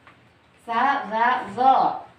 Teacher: Ujung lidah dengan ujung gigi seri atas. Itu huruf lisan.